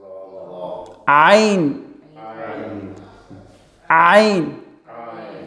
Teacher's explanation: From the middle of the throat.